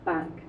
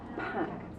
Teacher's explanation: with the voiceless sound there's a big puff of air you can feel it with your hands